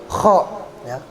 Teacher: Khannas itu kho-nya kayak kita buang dahak ya. Kho, dia di tenggorokan bunyinya.